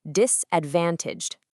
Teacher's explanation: put a very specific heavy emphasis directly on that van syllable